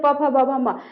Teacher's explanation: अब प फ ब म बोलिए, कहां से उच्चारण हो रहा है ओष्ठ से, इसमें जीव का कोई रोल नहीं है, ओष्ठ से सीधे सीधे प फ ब म, यानी पूरे पवर्ग का उच्चारण स्थान क्या हो गया ओष्ठ, तो इसलिए इसको हम क्या कह सकते हैं ओष्ठ्य वर्ण।